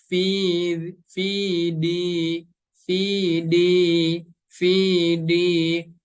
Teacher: Huruf dal tempat keluarnya dari ujung lidah kita, maaf ya, menempel ke tempat tumbuh gigi seri yang atas